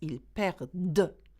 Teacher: You don't say perdant because we've conjugated it, okay? ENT is not pronounced here.